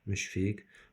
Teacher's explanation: müşfiq sözündə müşfiq K kimi tələffüz olunacaq